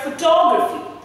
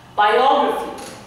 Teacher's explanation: I am stressing the one which is just before graphy